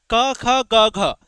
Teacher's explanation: तो ये सभी क वर्ग जो है यह कंठ से निकलता है।